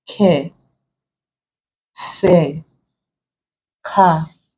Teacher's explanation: These are vowel sounds. So we know that the R there is not pronounced. It joins with the vowel sound.